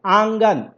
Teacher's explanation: नाक से भी निकल रहा है, मुंह से भी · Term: अनुनासिक